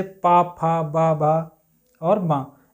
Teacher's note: जो हमारे ओठों से वर्ड बोले जाते हैं। ओठों से जब हम इनका उच्चारण करते हैं तो ओठ हमारे बिल्कुल चिपक जाते हैं। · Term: ओष्ठ